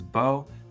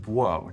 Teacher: Now, for some speakers, they always pronounced that bo, but other speakers had variation between pronouncing it as bo and buo, depending on context